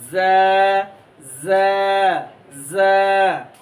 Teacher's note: জিব্বার আগা সামনের নিচের দুই দাঁতের আগার সাথে এমনি লাগাইয়া মৌমাছির আওয়াজের নাই এরকম একটা আওয়াজ বের হবে,